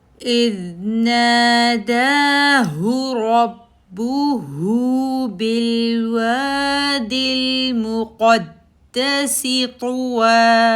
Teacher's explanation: دال کے اوپر اگین تشدید ہے قلقلہ لیٹر میں سے تو پہلے دال کے اوپر آواز رک جائے گی